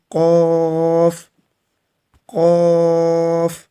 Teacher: قاف بھی موٹا پڑا جائے گا، پر پڑا جائے گا۔ تو آپ نے جو زبان کا پیچھے والا حصہ ہے، اس کو اوپر والا جو تالو کا نرم حصہ ہے وہاں پر اس کو لگانا ہے